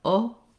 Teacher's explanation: Some languages just have one sound for O, and that would look like this. And it sounds like O with no change in the shape of the mouth. In English, O, we close the jaw and relax the lips as we finish that sound O.